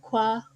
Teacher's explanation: as labialized velar pluses now these labialized velars vary between um a velar plosive with a secondary labial articulation like qua or and a co-articulated labial velar articulation something more